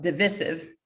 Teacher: The word divisive has two pronunciations, yeah, with a long I sound on the second syllable and with a short I sound on the second syllable